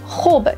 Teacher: hub is less throaty than in Arabic